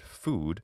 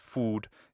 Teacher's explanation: in my speech which is true of almost all english speakers there is a diphthong there